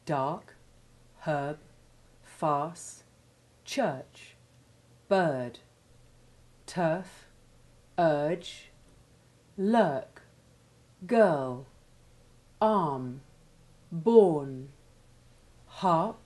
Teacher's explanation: The R is usually weak when It precedes another consonant, other than another R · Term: weak R